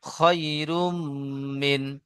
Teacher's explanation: রয়ের উপরে দুপেশ তানবিন এসেছে, তানবিনের পরে ইউমিনের চারটি হরফের মধ্যে মিম এসেছে, তাই তানবিনের আওয়াজকে একালি পরিমাণ গুণনা করে পড়তে হয়